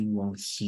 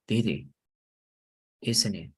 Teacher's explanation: when you have the he, you can kind of eliminate the H. You don't say one he, you can say one it.